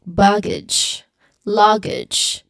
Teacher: ends with the age sound and the stress is firmly on the first syllable